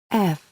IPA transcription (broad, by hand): f